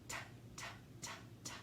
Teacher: that tongue tip is touching, right on the alveolar ridge behind those front teeth